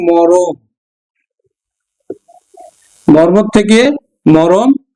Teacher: এই দেখো এই র এর সাথে একটা অ ধ্বনি চলে এসছে যুক্ত ব্যঞ্জন ছিল এ যুক্ত ব্যঞ্জনের মাঝে একটা অ ধ্বনি চলে এসছে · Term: মধ্যগত স্বরসঙ্গতি